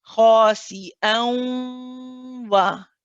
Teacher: What I'm doing is I'm making the sound go through my nose. So I'm keeping that part of the noon.